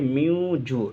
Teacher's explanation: ناک میں نون کی آواز کو چھپا کر پڑھیں گے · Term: اخفا